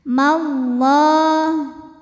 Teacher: lam pada lafaz Allah dibunyikan secara tafhim karena huruf sebelumnya berbaris fathah